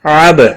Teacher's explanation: عب با ساکن پر قلقلہ ہوگا